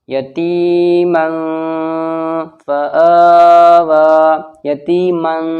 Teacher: من ہو گیا نا اخفا، ناک میں آواز گونج رہی ہے، چھپ رہی ہے